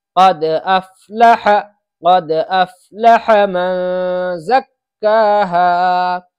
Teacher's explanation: یہاں نون پر اخفا ہوگا، اس لیے کہ نون ساکن کے بعد حروف اخفا کے 15 حرفوں میں سے زا رہا ہے، اس لیے یہاں پر اخفا ہوگا۔